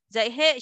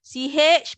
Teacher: ZH ialah CH tanpa angin